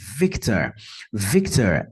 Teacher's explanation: notem que a primeira sílaba é a mais forte